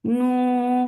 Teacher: for Dhamma circle your lips, make it 2 counts long. You for Dhamma circle your lips, start with Hamza.